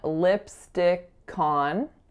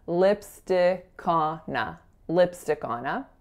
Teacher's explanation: the K of lipstick is going to bop on over, so we're saying lipstick on, and then the N of on is going over to our next word, so lipstickona, lipstickona.